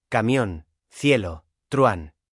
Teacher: Recordemos, vocales cerradas son i, u, vocales abiertas son a, e, o. Una vocal cerrada y una vocal abierta, vocal cerrada más vocal abierta. La abierta suena más fuerte. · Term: diptongo